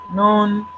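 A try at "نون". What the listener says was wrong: noon, long, all that. Sometimes they come in the beginning of a chapter and we have to read it elongated way in that form.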